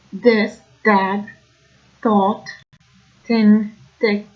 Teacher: the sound in words like thought, this, that become more dentalized, so you hear that sound of the back of the teeth